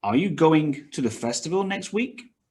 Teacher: going festival and week are stressed more than the other ones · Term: sentence stress